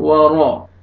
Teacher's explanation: second آیت، واو زبر وا، را زبر را، را کو آپ نے موٹا کر کے پڑھنا ہے